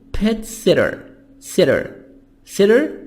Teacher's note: t soft d between two vowels